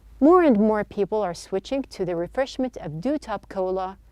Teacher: it is linked together there is no chopping and there's no robotic reading